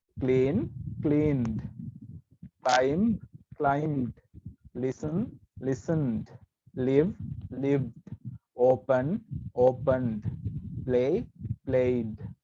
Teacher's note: ed එකතු වුණාට ඒක pronounce කරද්දී අපි e pronounce කරන්නේ නැහැ. d තමයි pronounce කරන්නේ. e මෙතන silent.